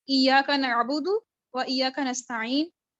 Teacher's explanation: یہ کٹ کرنے والا حمزہ ہے، یعنی یہ کسی لفظ کو دوسرے سے ملنے نہیں دیتا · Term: حمزہ قطعی